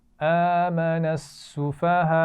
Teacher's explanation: بڑی مد ہے، اس کو خوب کھینچ کر پڑھیے